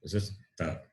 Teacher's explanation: Ta is dental and alpa prana.